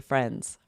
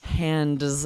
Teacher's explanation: We're not saying the D at all.